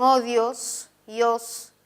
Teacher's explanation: esa I casi ni suena. Odios es un diptongo.